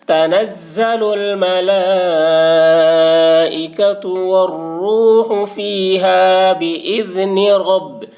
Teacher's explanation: تنزل الملائکۃ والروح فیہا بإذن، را با زبر رب، با کے اوپر تشدید ہے، تشدید والے حرف کو 2 مرتبہ پڑھیں گے، ایک مرتبہ پہلے والے حرف را سے ملا کر اور ایک مرتبہ خود اسے۔ را کے اوپر زبر ہے، اس لیے را کو پر پڑھیں گے۔ تنزل الملائکۃ والروح فیہا بإذن رب، با زیر بھی، با کے نیچے زیر ہے، زیر کو جلدی پڑھیں، تھوڑا بھی نہ کھینچیں، معروف پڑھیں، مجہول آواز سے بچیں۔